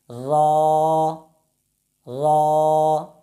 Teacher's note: आपकी ज़बान की नोक सामने वाले दांतों के पीछे जो तालु का हिस्सा है वहाँ लगती है। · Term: हर्फ रा